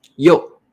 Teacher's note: When you are responding to the teacher, you say 有. We use the fourth tone.